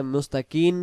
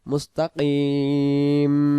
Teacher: যদি এখানে মুস্তাকিন পড়ি এটা নুন হয়ে যাবে, মুস্তাকিম ঠোঁট লাগিয়ে দেব